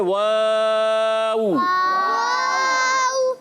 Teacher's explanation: واو کی ادائیگی معروف رکھنی ہے، مجہول پڑھنے سے بچنا ہے · دونوں ہونٹوں کی گولائی سے ادا ہوتا ہے